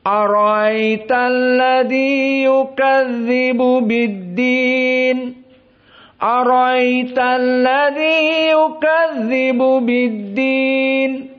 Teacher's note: Maksudnya hamzahnya dibaca, namun tidak zahir atau ditahqiq seperti Hafs. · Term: tashilul hamzah